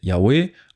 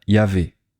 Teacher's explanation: Ils prennent la troisième lettre, la lettre Vav, et la prononcent comme un son V.